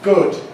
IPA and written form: gʊd (good)